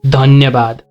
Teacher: When you're saying dhanyabad, you have to touch the teeth with your tip of the tongue. That's how you pronounce the sound dha. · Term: dental sound